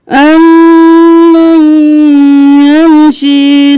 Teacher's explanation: میم پر بھی دیر لگانی ہے اور پھر یا پر بھی